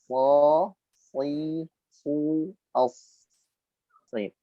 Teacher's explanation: letak pada ujung lidah, nempel pada gigi seri bawah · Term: shad